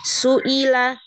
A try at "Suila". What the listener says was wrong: Jangan shu, tapi su. Tipiskan lagi.